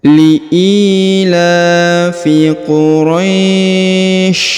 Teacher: diberikan hembusan ya, Quraisy, supaya jelas huruf sya-nya.